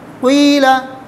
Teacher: ہونٹ گول ہو جائیں گے، اس سے پیش کی طرف اشارہ ہو جائے گا اور زیر پڑھا جائے گا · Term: اشمام حرکت بالحرکت